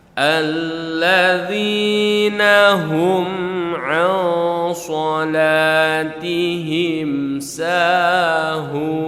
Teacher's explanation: Ansa dibaca dengung, ditahan 2 sampai 3 harakat. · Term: ikhfa hakiki